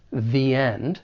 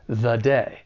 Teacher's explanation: it's stressed when it comes before the vowel sound in end the end and it's unstressed when it comes before the consonant sound in day the day